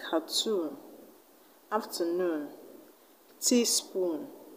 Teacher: in cartoon you're going to stress tune in afternoon you're going to stress noon